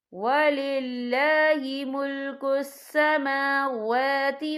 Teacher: یہاں دونوں جگہوں پہ کھڑی حرکات ہے، تو ہم یہاں 2 یا 3 حرکت کے برابر کھینچ کے پڑھیں گے